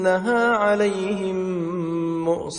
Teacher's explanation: mim merangkap secara mendengung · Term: idgham mimi